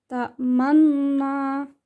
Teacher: cara membacanya dengan cara mencampurkan bacaan dhammah dengan bacaan sukun disertai dengan gerakan mulut yang dimajukan saat mengucapkan huruf U. Dia saktah taklil. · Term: ismam